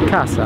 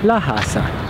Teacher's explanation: people in Florence don't pronounce a hard sounding C when it's followed and preceded by a vowel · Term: Florentine dialect